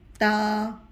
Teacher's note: تا کی ادائیگی زبان کی نوک دانتوں کے سامنے کے 2 دانتوں کے جڑوں میں لگے گی تو تا ادا ہوگا